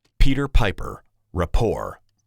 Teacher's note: a puff of air hitting the diaphragm of the microphone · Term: plosive